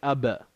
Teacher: There's no air that comes out. Ab. The sound vibrates.